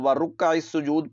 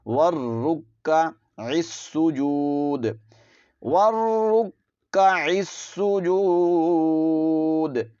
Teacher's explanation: اس لفظ کو بھی دیکھ لیجئے، اس کو ورکع السجود پڑھ لیا جاتا ہے، جبکہ یہاں پر واو کو را کے ساتھ ملانا ہے، را کو کاف کے ساتھ ملانا ہے، کیونکہ را اور کاف مشدد ہیں، تو را اور کاف کو جماؤ کے ساتھ ادا کریں گے